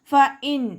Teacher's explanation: നൂൻ സാക്കിനയെ വ്യക്തമാക്കി മണിക്കാതെ ഉച്ചരിക്കുക. ഫ ഇൻ നൂനിൻ്റെ സൗണ്ടിനെ വ്യക്തമായിട്ട് കേൾപ്പിക്കുക.